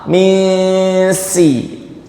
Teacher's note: Tidak dileburkan ke huruf sin. Nunnya masih nampak. Misi. Jadi dari sisi satu dia masih mirip idhar, dari sisi yang lainnya dia mirip idgham. · Nun sukunnya diucapkan langsung ke makhrajnya huruf sin. Itu kan mirip idgham. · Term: ikhfa